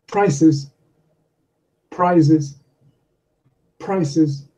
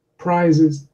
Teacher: the vowel sound is shortened slightly before the unvoiced consonant